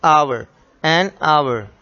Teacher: H is silent here, so this is owl sound.